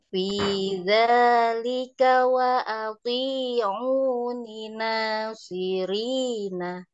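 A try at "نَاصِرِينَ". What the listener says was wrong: Ya, cuman naknya kurang sempurna tadi. Nasirina.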